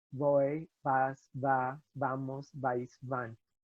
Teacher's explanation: So the letter V is pronounced like B, but softer. It's not a V sound.